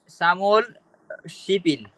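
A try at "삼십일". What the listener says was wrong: শিবিল। শিপ ইল না, শিবিল। সামুয়াল শিবিল।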